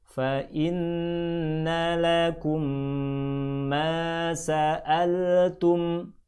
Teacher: Prakteknya gabungkan kedua huruf antara mim dan mim berikutnya. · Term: bacaan idgham